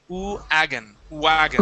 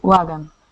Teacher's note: So starting off with an oo instead of a V sound